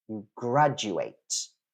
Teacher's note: Notice that the stress is on the first syllable. It's not on the last one, but it's still graduate.